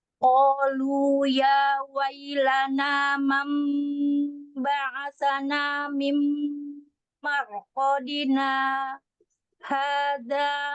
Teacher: Kemudian kita berhenti sejenak tanpa nafas, kemudian dilanjut ke hadza, gitu ya. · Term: saktahnya